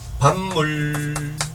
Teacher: 비읍이 비음화가 되면 미음이 된다는 얘기야